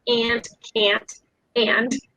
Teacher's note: So if you notice the vowel here, like you go ah and ah for aunt and can't. So I would say aunt, and there's some nasalization going on there